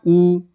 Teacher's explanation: ऊ करते हो तो ओंठ पूरा गोल हो जाता है ना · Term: ओष्ठ